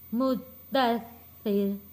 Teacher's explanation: سختی کے ساتھ تھوڑا رک کر ہم نے تشدید والے لفظ کو ادا کرنا ہے، اور جب یہاں پہ ہم را کو وقف کرتے ہیں تو را موٹی نہیں پڑھیں گے، کیونکہ را سے پہلے زیر آ جاتا ہے۔ جو را کا زبر ہے وہ ختم ہو جائے گا اور را سے پہلے زیر ہوگی، اس لیے ہم نے را کو پتلا پڑھنا ہے۔